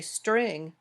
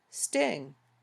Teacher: if someone wants to say string but leaves out the R sound, listeners might hear sting